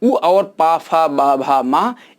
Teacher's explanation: ये ओठ से उच्चारित किए जाते हैं, इसलिए इसको ओष्ठ वर्ण कहते हैं